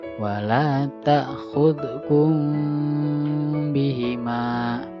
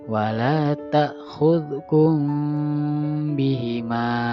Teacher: Nah, jadi mim matinya ditahan selama 3 harokat. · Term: ikhfa syafawi